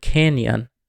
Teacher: In English, we can see this in the word canyon. You can see the nya is when the tongue touches the roof of your mouth. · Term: palatalization